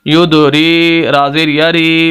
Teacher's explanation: یہاں پر را کے نیچے زیر ہے، کیوں لمبا کر رہے ہیں؟ کیونکہ اس کے آگے یا مدہ ہے۔ جیسے الف مدہ تھا، میم کے آگے میم کو لمبا کیا، اسی طرح یا مدہ ہے، را کو لمبا کریں گے۔